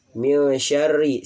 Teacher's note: Dan min syarri, ro di sini tasdid dan berharakat kasroh, hukumnya dibaca tarkik tipis ya